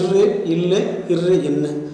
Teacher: நுனிநாவும் நுனி அன்னமும் இணைவதால் பிறக்கும் ஒளிகள் நுனினா நுனி ஒளிகள் என்றும் கூறுவர்